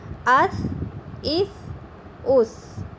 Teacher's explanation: یہ دیکھیں سا کو آپ نے نرمی سے پڑھنا ہے، اور جزم کی وجہ سے ہم اس کو ملا کر پڑھ رہے ہیں